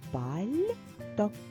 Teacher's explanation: буде м'яким звук що чуємо який записаний перед буквою ь пальто м'який знак робить м'яким звук ль